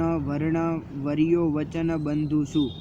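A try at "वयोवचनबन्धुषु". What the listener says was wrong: द्वादश वयो, वर्यो नहीं होगा, वयो वचन बंधुषु।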